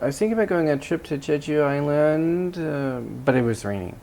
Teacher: notice my intonation went up at the end of the first clause then it went down at the end of the second clause where I had finished